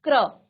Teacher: क आधा उच्चारण करेंगे और र आपका पूरा उच्चारण होगा, क्योंकि क आधा है।